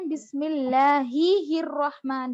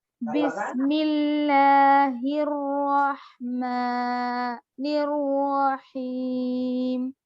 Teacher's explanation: اکثر لوگ کیا کرتے ہیں بسم اللہ ہی الرحمن پڑھتے ہیں، دو ہا یہاں پر ہے نہیں یا پھر ہا پر تشدید نہیں ہے تو دو مرتبہ ہا نہیں پڑھیں گے